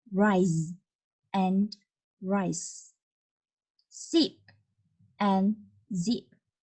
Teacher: the air escapes through a narrow passage along the center of the tongue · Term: alveolar fricatives